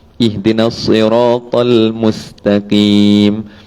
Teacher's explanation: Lidah tu akan fleksi. Bila time huruf sad duduknya tinggi, datang huruf sin dia turun balik.